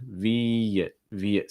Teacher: you get a long I followed by a short I, and it's going to be joined with a slight y sound.